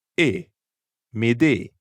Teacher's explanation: Instead of that English A sound, the French vowel is shorter.